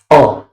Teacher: मध्य स्वर। जो जीवा के मध्य भाग से जो है उच्चारित होते हैं